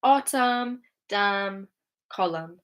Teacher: So autumn, damn, column, we don't pronounce the N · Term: the N is silent